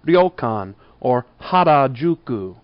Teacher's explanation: keep on the RDL sound that sound is particular to Japanese it's kind of a flapped d with an r and an l combine together